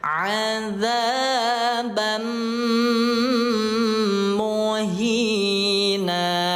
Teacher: idgham memasukkan bi gunnah dengan dengung. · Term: idgham bi gunnah